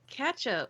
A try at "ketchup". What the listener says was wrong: With a fucking hard A? It's like you're like catch up. Like, come, hurry up. Catch up. Catch up.